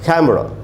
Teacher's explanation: अब देख रहे हैं ये प्राइमरी स्ट्रेस है, यानी पहला वाला जो खे है, के प्लस ए, खे, उसी पर स्ट्रेस पड़ेगा